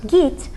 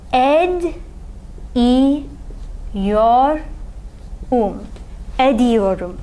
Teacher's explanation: Gitmek and etmek, when you put them into the present progressive tense, are these, you'll notice that these two verb stems both end in te. That te is going to undergo consonant alternation with de. So, for gitmek, if you want to say I am going or I habitually go, we're going to say not git, but gid, iyor, gidiyorum, I am going or I habitually go.